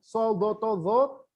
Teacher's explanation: Kalau tebal dalam semua keadaan, soldotozo, yang jenengan angkat 2 bagian lidah, tengah sama belakang. Tengah, aula tengah lidah sama belakang.